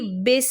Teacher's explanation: ساکن سین کی آواز میں پرومیننٹ سی ٹی کی آواز آئے گی، بس، اور با کو ای کے ساؤنڈ میں پڑھیں گے، بس، بس، اے کے ساؤنڈ میں نہیں پڑھیں گے، ٹھیک ہے؟